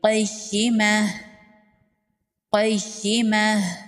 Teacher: قاف حروف مستعلیہ میں سے ہے، قاف کو پر پڑھیں گے، یا پر تشدید ہے، یا کو سختی سے پڑھیں گے